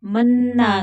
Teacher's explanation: आमन्ना, अलिफ को भी खींच कर पढ़ेंगे, लंबा करके पढ़ेंगे क्योंकि अलिफ के ऊपर खड़ी जबर है। मन्ना, नून मुशद्दद है तो गुन्ना होगा और खींच कर पढ़ेंगे क्योंकि आगे अलिफ मद्दा है